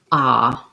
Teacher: ah is called an open back vowel because there's a lot of openness